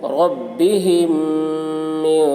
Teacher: رَبِّهِمْ میم کے اوپر جزم ہے، جزم والے حرف کو پہلے والے حرف سے ملا کر پڑھیں گے. رَبِّهِمْ میم ساکن کے بعد میم آ رہا ہے، اس لیے میم کو میم سے ملا کر غنہ کے ساتھ پڑھیں گے. رَبِّهِمْ میم کو میم کے ساتھ ملا کر پڑھیں گے، اس کو ادغام شفوی کہتے ہیں.